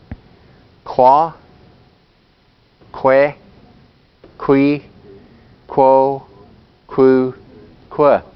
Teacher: on the Q sound, sometimes you can hear the G sound, and sometimes the K sound too